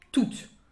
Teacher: The final E makes the T sound. And the final S, as very often, you don't hear it. So, toutes les fêtes, you will note then that when it's feminine, you don't hear any difference if it's singular or plural.